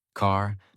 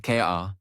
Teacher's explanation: In American accent, you clearly hear the R. Car, not K-A, but car. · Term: R sound